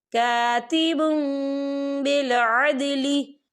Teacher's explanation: ये देखिए कातिबुम, बा के पर तनवीन है और तनवीन के बाद जो है बा आ रहा है, तो यहाँ पर इकलाब होगा यानी तब्दीली होगी। हम बा को जो है मीम के साथ मिलाकर पढ़ेंगे और यहाँ पर गुन्ना भी होगा।